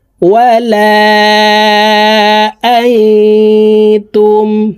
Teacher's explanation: ওয়ালা, হামজা নুন জবর আং ইকফাহ গুন্না নুন সাকিনের পরে ইকফার হরফটা আসছে এই কারণে এই নুন সাকিনকে নাকের ভিতরে লুকাইয়া গুন্নার সহিত পড়তে হবে